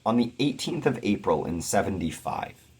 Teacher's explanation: it's pretty much a straight anapestic line da da da da da da d da da d da